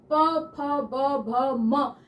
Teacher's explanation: प वर्ग जो है प बोलने में दोनों होठ मिल रहे हैं